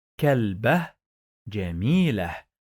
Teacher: I pronounce it with sukoon, like I stop on each one.